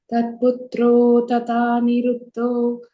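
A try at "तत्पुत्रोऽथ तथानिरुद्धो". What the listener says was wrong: the third line, first word, I heard an extra tha there. It's tat putro thani ruddho. No, tat putro thani ruddho.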